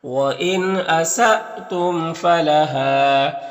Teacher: وَإِن نون میں اظہار حقیقی ہوگا، یہاں پر حمزہ ساکنہ جھٹکا لگے گا، میم میں اظہار شفع بھی ہوگا، ہاں میں الف مدہ ہے تو اس طرح سے پڑھیں گے.